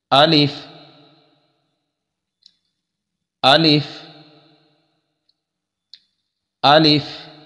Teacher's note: الف کا مخرج یہ ہے کہ منہ کے خالی حصہ سے یہ ادا ہوتا ہے، منہ کو مکمل کھولا جائے گا، منہ کو مکمل کھولنے کے ساتھ الف جو ہے وہ صحیح انداز میں ادا ہوگا۔